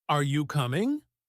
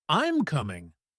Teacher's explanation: Are you coming? Rising tone versus I'm coming. Falling tone. That rise and fall is what makes English sound natural and expressive.